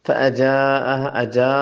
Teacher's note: यहाँ मद है, इसको मद वाजिब कहते हैं. इसको 2 से 3 अलिफ तक लंबा करना है